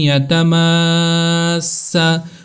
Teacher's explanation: ادغام مع الغنہ ہوگا، یعنی غنہ ہوگا، تھوڑی دیر ہم نے رکنا ہے یا کی آواز پر